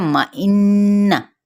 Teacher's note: नून पे गुन्ना किया जाएगा